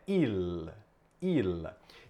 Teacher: O L no italiano faz com que a língua tenha que bater no céu da boca. Então, portanto, o correto é il.